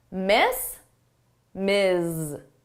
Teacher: So here it's the s, z, the unvoiced and the voiced sound.